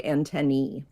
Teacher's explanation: most scientists are more likely to say antennee antenna with the AE saying e the way that it does in algae